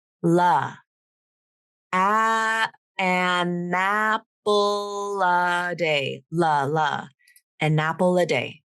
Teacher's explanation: You just use a light L to link to the next vowel. So your tongue tip comes up and you end up saying la.